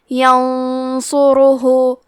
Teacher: تو ہم یہ غنہ کو بھی بھاری آواز میں ادا کریں گے